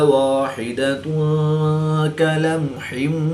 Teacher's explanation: دو پیش کی تنوین کے بعد کاف حروف اخفا میں سے ہے تو یہاں پر اخفا ہوگا یعنی غنہ زمانی کر کے پڑھیں گے۔